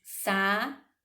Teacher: Eu tenho aí o hiato. Eles se encontram, o A e o U, mas se separam em sílabas diferentes